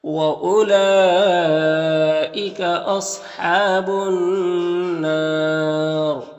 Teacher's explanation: یہاں پر الف لام حروف شمسی نون کے شروع میں ہے، تو الف لام دونوں کو نہیں پڑھیں گے۔ نون مشدد غنہ ہوگا، اور یہاں پر الف مدہ ہے، اور وقف کریں گے تو را کا زیر سکون سے بدل جائے گا، تو پھر را کو پر پڑھیں گے، اور مد عارض وقفی ہوگا، تو اس طرح سے پڑھیں گے۔